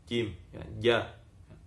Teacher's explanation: Kalau digesek keluar nanti desisnya, karena ini jim sifatnya suara tertahan, ya. Suara tertahan, nafas juga tertahan, jadi kuat, jangan langsung jadi ketuk. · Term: huruf jim